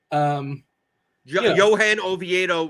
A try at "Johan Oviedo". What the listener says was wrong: And by the way, you mispronounced his first name. You included the N.